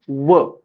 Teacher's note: दात आणि ओठ यांना जिभेचा एकाच वेळी स्पर्श होऊन उच्चारल्या जाणाऱ्या वर्णांना दंतोष्ट वर्ण असे म्हणतात . उदाहरणार्थ एकच आहे. व दंतोष्ट वर्ण एकच आहे कोणता? व